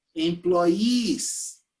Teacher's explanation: it's a long e you need to smile